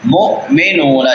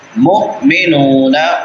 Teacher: مؤمنون جھٹکا دینا ہے، مومنون نہیں پڑھنا